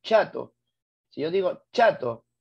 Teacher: la africada es aquella en la que en primer lugar el aire no sale, pero al final sale